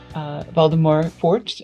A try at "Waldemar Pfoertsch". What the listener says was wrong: That's a German pronunciation. And Waldemar pronounced with a V, not with a W.